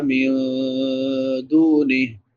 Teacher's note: نون ساکن کے بعد حروف اخفاء میں سے دال ہے تو یہاں پہ اخفاء ہوگا